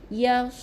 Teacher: Huruf sod di bahagian hujung lidah juga menekan kepada bahagian gusi bawah. Okey. Gigi kena rapatkan gigi atas dan bawah kita temukan, penuhkan udara di bawah mulut kita.